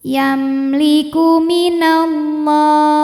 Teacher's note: Lalu ada izhar syafawi. Sebab mim sukun menghadapi selain mim dan ba yaitu lam. Maka mim dibaca jelas. · Lam jalalah dibaca secara tafkhim sebab huruf sebelumnya berbaris fathah maka dibacanya tebal